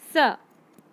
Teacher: जब वर्ण स का उच्चारण करते हैं तब जीभ दांतों का स्पर्श करती है, मतलब छूती है, इसीलिए इसे दंत्य स कहते हैं।